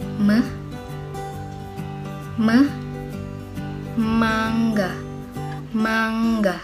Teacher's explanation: konsonan yang dihasilkan dengan mempertemukan kedua belah bibir yang bersama-sama menjadi artikulator dan sebagai titik artikulasi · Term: konsonan bilabial